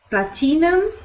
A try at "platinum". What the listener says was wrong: So we pronounce that word with no I sound. We ignore the I. We don't pronounce it. We say platinum. Platinum.